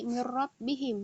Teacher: Nah, apabila nun sukun bertemu dengan huruf lam dan ra, dia dibaca idgham bi ghairi gunnah tanpa didengungkan, bacaannya ditakrir, digetarkan ya. Seperti mirrab bihim, bacaan mirrab bihim, dia nun sukun bertemu dengan ro, mirrab bihim, dia digetarkan bacaannya, ikror, digetarkan.